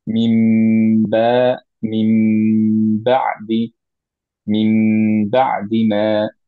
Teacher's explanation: নুন সুকুনের পরে যখন বা থাকে তখন নুনটা রিপ্লেস হয়ে যায় হচ্ছে একটা মিম দিয়ে, উইথ গুন্না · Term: একলাব